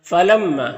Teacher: मीम मुशद्द है तो गुना होगा। यानी मीम की आवाज को नाक में ले जाकर गुनगुनाएंगे। · میم مشدد ہے تو غنہ ہوگا، یعنی میم کی آواز کو ناک میں لے جا کر گنگنائیں گے ایک الف کی مقدار۔ یہاں پر الف میں جو مد ہے یہ مد منفصل ہے، کیونکہ حمزہ دوسرے کلمہ میں ہے، حرف مد الف کے بعد ہے، تو مد منفصل کو ایک الف کے برابر بھی کھینچ کر پڑھتے ہیں اور 3 سے 4 الف کے برابر بھی کھینچ کر پڑھ سکتے ہیں۔